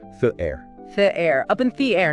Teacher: Try to link the and air smoothly together. Almost like one word.